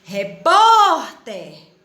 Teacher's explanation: o por é mais forte